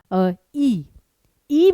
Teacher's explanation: इ में आपका मुंह जरा सा खुल रहा है।